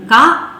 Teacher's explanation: ಸ್ವರಗಳ ಸಹಾಯವಿಲ್ಲದೆ ಉಚ್ಚರಿತ ಆಗುವುದಿಲ್ಲ ನೋಡಿ ಕ ಅಂತ ಹೇಳಿದ ಕೂಡಲೇ ಕರಂಭದ ಆ ಕ ಧ್ವನಿಯ ಜೊತೆಗೆ ಅಂತ್ಯದಲ್ಲಿ ಅ ಸ್ವರವು ಕೂಡ ಕೇಳಿಸ್ತಾ ಇದೆ